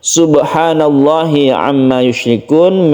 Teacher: Memnya bertasydid berarti dia itu gunnah musyaddadah. Kemudian yushrikun kita baca mad alid lisukun.